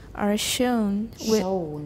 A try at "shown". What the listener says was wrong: Shown. Two problems. 不是圆唇，没有那么圆，有一点唇化，不是那么圆。然后是 O, 欧洲的 O. Shown. Shown.